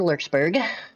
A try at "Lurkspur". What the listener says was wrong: It sounded like you said Lurksburg.